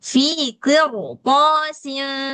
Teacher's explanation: Fi qirtasin. Nah, jadi setelah ro sukun ada huruf isti'la, maka ro wajib dibaca tafkhim